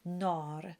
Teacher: the R in nord is voiced, but the D is not.